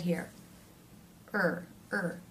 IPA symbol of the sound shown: ɝː